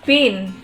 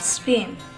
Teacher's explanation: the aspirated pH of pin versus the unaspirated P of spin